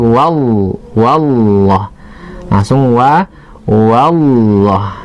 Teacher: Namun yang pasti kita perhatikan, tidak boleh kita baca wawullah ya, bukan, kalau kita tulis bukan waw Allah gitu, tapi langsung wa langsung Allah. Jadi bukan wawullah, tidak boleh dimonyongkan bibir, namun langsung ditebalkan huruf lamnya. Lam dalam lafaz Allah itu harus ditebalkan wallah. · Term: lamnya tebal